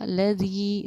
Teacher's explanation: या साकिन से पहले ज़ेर है, इसको थोड़ा खींच कर पढ़ना चाहिए। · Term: हुरूफ़ मद्दा